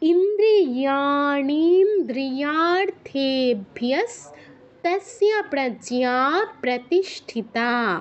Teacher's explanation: প্রজ্ঞাতে দীর্ঘ, প্রতিষ্ঠিতা তাতে দীর্ঘ।